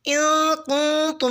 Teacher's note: ان کنتم میں نون ساکن پہ اخفا کریں یعنی غنہ کی آواز کے ساتھ پڑھیں